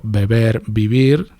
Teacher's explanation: Es como una B y es bilabial. Tanto la B como la V son bilabiales.